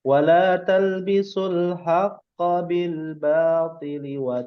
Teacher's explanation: kalau kita baca agak pelan-pelan terbatas tetap tidak boleh panjang huruf haqqo-nya